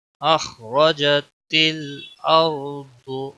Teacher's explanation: خا موٹا پڑا جائے گا، را بھی موٹا پڑا جائے گا